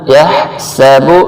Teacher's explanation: یہ ہا جو حلق کے درمیان سے نکالنا ہے، اس کو حلق کے آخر سے نہیں نکالنا۔ یحسب، سین سیٹی والا حرف ہے، اور با کو جلدی سے پڑھنا ہے، کھینچنا نہیں ہے۔